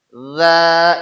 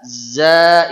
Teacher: Jadi zal lidah di atas, zai lidah di bawah, bentuk getarannya sama. Za ini atas, za ini bawah.